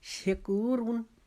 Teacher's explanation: راہ پر اگر دو پیش ہوں تو وہ راہ بھی موٹی پڑی جائے گی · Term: راہ موٹی